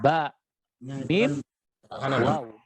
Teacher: 3 huruf yang berhubungan langsung dengan kedua bibir, yakni huruf mim, huruf ba, dan huruf waw. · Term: huruf asyafatan